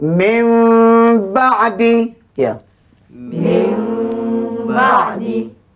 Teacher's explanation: Nun tukar jadi mim didengungkan